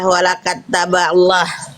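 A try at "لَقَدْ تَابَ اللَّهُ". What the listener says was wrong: Ya nggak ada wawunya tapi bunda kebetulan laqad taballahu ya.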